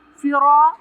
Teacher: را کو لمبا پڑھیں گے اور تفخیم کریں گے۔